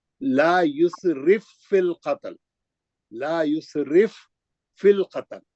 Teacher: ایک فا ساکن ہے ایک فا مشدد. ہم سیدھا را کے زیر کو لے کے مشدد میں جا رہے ہیں. لم یسرف فی القتل نہیں پڑھیں گے وہ. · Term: ادغام متماثلین